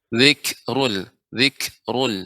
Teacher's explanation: pada kata zikrul kaf ya yang sukun, ada sifat hamusnya